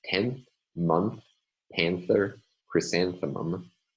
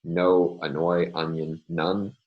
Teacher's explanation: 10th, in the words 10th, month, panther, and the flower chrysanthemum. Instead, there is a dental nasal, and in fact, it's almost an interdental nasal.